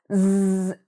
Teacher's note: You might even feel a zzz, like a buzz. So that happens when the voice box is moving.